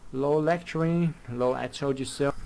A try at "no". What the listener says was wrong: He says no and it comes out as low. Good idea, but wow, he mispronounced no.